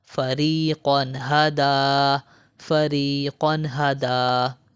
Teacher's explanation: یہاں پر دیکھیں دو زبر یعنی تنوین، تنوین کے بعد حرف حلقی میں سے ہا آ رہا ہے تو یہاں پر ہم غنہ نہیں کریں گے